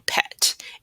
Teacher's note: So let's talk about the P sound in pet. It is an unvoiced sound. So you should feel no vibration on your throat.